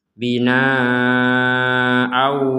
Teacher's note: Jadi di rongga hidung kita ada dengungan. bina au tidak sekedar au tapi harus ada dengungan.